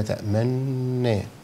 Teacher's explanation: وفي إشمام مقارن أو مصاحب لنطق الحرف اللي هو في كلمة تأمنا، ما لك لا تأمنا، فمع النون أضم الشفتين